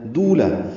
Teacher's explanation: یکون او واو مدہ ہے. دولا دو واو مدہ ہے، لام پر زبر ہے، جلدی ادا کریں گے